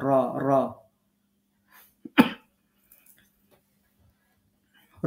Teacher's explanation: জিহ্বার আগার উল্টা পিঠ যেটা প্লাস উপরের তালু তাহলে র উচ্চারিত হবে র র র হরুফটা উচ্চারণ করার সময় কিছুটা প্রতিধ্বনি হবে এটা